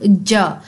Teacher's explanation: आपकी जो टंग का फ्रंट एरिया है वो आपके हार्ड पैलेट से टकराता है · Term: पैलेटल